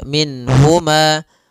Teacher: Nun di sini jelas karena bertemu dengan huruf ha maka tidak boleh ditahan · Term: izhar